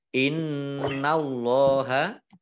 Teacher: nun tasdid dibaca gunnah ya, mendengung, ditahan 2 harokat. Allahnya dibaca tebal karena harokat di depannya fathah.